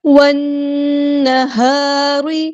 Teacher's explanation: لام یہاں پر لام شمسیہ ہے، اس کو ہم ظاہر نہیں کریں گے۔ والنہار، نون پہ غنہ زمانی ہو رہا ہے، الف کے برابر رکیں گے، ہاں ہم سمپل پڑھیں گے، الف مد آیا تو مد اصلی کریں گے۔